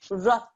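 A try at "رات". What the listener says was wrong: There's a ra, there's a ta. We have to make both sounds, okay? Because they're going to be joined.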